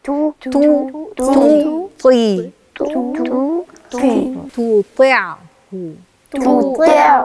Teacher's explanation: يبقى أنا اتنقلت من التاء الرقيقة للطاء الفخمة اللي هي مكسورة · تاء مضمومة والطاء عندك مكسورة والتاء رقيقة والطاء فخمة